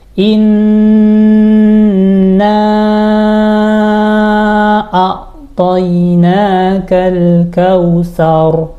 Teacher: nun tasdid kita dengungkan lama nahannya